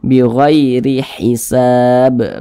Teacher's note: ketika kita mengucapkannya pangkal lisan kita itu tidak terangkat ke atas, dibaca tipis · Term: dibaca tarkik